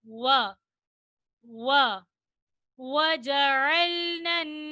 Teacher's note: वाव को अदा करते वक्त मुकम्मल होठ गोल होंगे